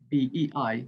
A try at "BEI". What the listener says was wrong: not BEI, BEI, like ABC. up in the pitch on the third acronym. We say like USA, ABC, BEI. Because otherwise BEI, I don't hear what BEI